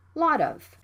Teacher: the T sound between vowels. It can be flapped.